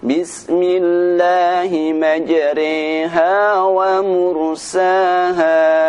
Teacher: imalah yaitu membaca bacaan ro dibaca dengan bunyi Rey